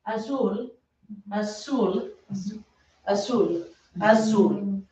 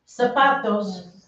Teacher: There is not a Z sound in Espanol. It's a S sound.